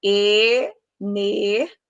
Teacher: na pronúncia de energia, eu separo o I e o A. Então, se eu separo o I e o A, são dois sons de vogais fortes que podem ficar em sílabas separadas. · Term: hiato